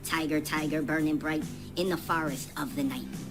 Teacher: each line has seven syllables so we're missing that last unstressed syllable at the end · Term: trochaic meter